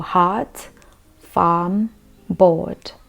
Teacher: the r is very subtle and sort of silenced you don't really roll the tongue